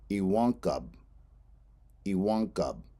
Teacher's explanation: stress is on the A, iwankab